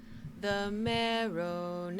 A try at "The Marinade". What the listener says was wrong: There's no O in marinade. Let's try it one more time.